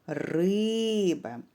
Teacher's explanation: наголос щоб дізнатися який склад наголошений необхідно слово погукати наприклад риба скільки складів два і наголошений буде перший склад